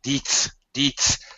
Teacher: I was confused because your D sounded like a T because you were aspirating